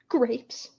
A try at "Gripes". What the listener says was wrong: Not grapes. But it's like grapes with an I.